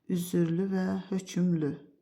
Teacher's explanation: Hər iki sözdə səs artımı müşahidə olunur, düzdür. Hər iki sözdə yalnız dodaqlanan saitlər işlənib.